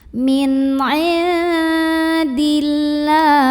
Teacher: Berikutnya di sini ada hukum ikhfa aqrab, karena ada nun sukun yang ketemu dengan huruf dal. Maka nun sukun ini dibunyikan samar-samar menuju huruf dal disertai dengungan. Ini dengungnya dikit karena dal ini masih dekat makhrajnya dengan nun.